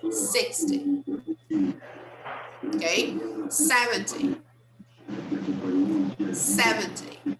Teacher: the second syllable is very weak we hardly stress that one we stress the first